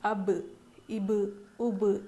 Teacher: قلقلہ والے حروف پہ جب جزم ہو تو ان کو پڑھنے میں ان کی آواز تھوڑی سی نا ٹکرا جاتی ہے